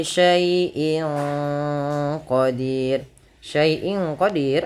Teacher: bacaan ikhfa hakiki yang di mana suara tanwin pada lafal in disamarkan ke huruf qof yang mana qf termasuk huruf ikhfa.